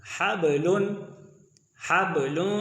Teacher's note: حبل، با کے اوپر قلقلہ ہوگا